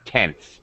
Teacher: Just quickly going from the N to the S with a little, really underpronounced TH.